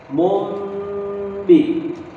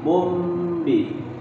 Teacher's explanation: Karena tanwin bertemu huruf ba. Nah, ketika tanwin bertemu huruf ba, muncullah suara mim.